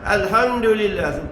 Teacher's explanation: izhar safawi tak boleh dengung. Jangan dengung. Baca dengan jelas alhamdulillah tu saja.